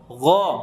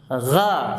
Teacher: Jadi tidak boleh memonyongkan kedua bibir ketika berharokat fathah. Perhatikan, ada gesekan sedikit halus.